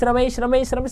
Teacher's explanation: ए का उच्चारण कंठ तालू से हो रहा है